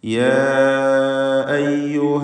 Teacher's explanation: ഇതിലുള്ള ദീർഘം മദ് മുൻഫസിൽ ജായിസ് എന്ന ദീർഘമാണ്. 4 or 5 ഹറക്കത്തിൻ്റെ അളവിൽ അലിഫിനെ ദീർഘിപ്പിക്കേണ്ടതാണ്.